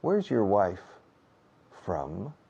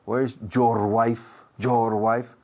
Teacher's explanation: Esa partícula your, adjetivo posesivo, no tiene peso fonético en la frase o acentual.